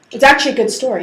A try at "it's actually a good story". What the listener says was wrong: You should emphasize the good story part.